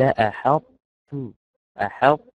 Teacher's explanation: لأن الأولاني مفخم والثاني مرقق، فببدأ بصفة الطاء وبنتهي بحرف التاء، بجيب التفخيم وبعدين أجيب التوقيف.